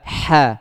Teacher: Keluarnya itu dari tengah, dari tenggorokan bagian tengah. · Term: huruf ha